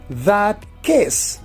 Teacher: Before a velar consonant, the t will become k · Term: regressive assimilation